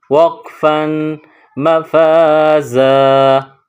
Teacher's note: جب یہاں وقف کریں گے، رکیں گے تو آخر میں جو الف لکھا گیا ہے اس کو ظاہر کریں گے، پڑھیں گے